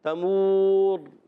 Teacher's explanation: تمور وقف کرنے میں را پر ہو جائے گا، مد عارض بھی ہو جائے گا، را کو موٹا بھی رکھنا ہے